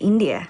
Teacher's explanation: She uses a rising intonation to express the afterthought, India.